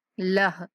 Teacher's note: وقف کریں گے تو ہا کو ساکن کر دیں گے